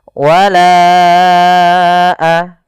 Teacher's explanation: Panjangkan bunyi la terlebih dahulu selama empat harakat, lalu lepaskan. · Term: Madd Jaiz Munfasil